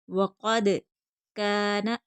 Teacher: لکم وقد، قاف حرف مستعلیہ پر پڑھیں گے، دال حرف قلقلہ ہے، قلقلہ ہوگا۔ وقد کان، کاف باریک پڑھا جائے گا، کھینچ کر پڑھیں گے، آگے خالی الف ہے